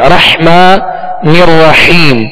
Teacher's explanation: 2 حا ہے، رحمٰن الرحیم، حا کو وسط حلق سے پڑھیں گے